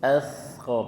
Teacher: Ciri dari sa dan zal itu lidahnya sedikit dikeluarkan dari gigi seri, sedikit saja ya.